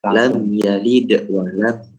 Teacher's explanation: ketika di lam yalid itu jangan sampai putus, Mas. Jangan lam yalid, jangan ada jedanya. Harus tetap lam yalid wa lam.